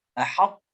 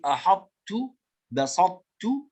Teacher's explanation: نبين صفة الاستعلاء في حرف الطاء في أحطت بسطت ونسميه إدغاما ناقصا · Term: إدغام ناقص